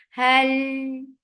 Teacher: Lam gets sifa of tawassut, and tawassut is medium flow of sound. Hal, and with fatha the sound will be short.